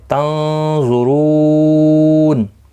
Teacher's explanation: رو واو مدہ ہے، ایک الف کی مقدار کے برابر کھینچ کر پڑھیں گے، را پر پڑھا جائے گا پیش کی وجہ سے، اور نون ساکن پڑھا جائے گا وقف کی صورت میں، وقف بالاسکان ہوگا، مد العارض وقفی ہوگا، 3 سے 5 الف کی مقدار کے برابر کھینچ کر وقف کریں گے